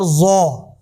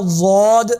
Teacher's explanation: ظا کی آواز نرم ہے، ضاد کی آواز سختی والی ہے